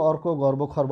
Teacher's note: অয়ের পরে রেফযুক্ত ব্যঞ্জন থাকলে সে অয়ের উচ্চারণ বিবৃত হয়, অর্থাৎ স্বাভাবিক থাকে, অর্থাৎ অবিকৃত থাকে।